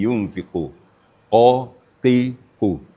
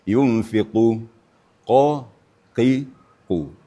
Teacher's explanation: makharijul hurufnya di pangkal lidah ya. dipertemukan dengan anak lidahnya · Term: qof